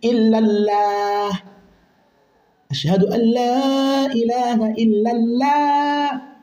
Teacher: yenye kusoma kwa uzito, kwa tafkhim, kujaza mdomo